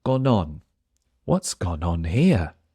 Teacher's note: You can hear how the N in gone jumps to the next word because it's a preposition.